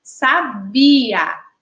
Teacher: A sílaba tônica é a sílaba bi.